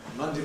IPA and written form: ˈmʌndi (Monday)